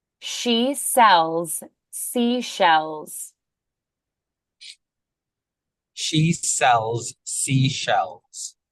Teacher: we have the sh which is voiceless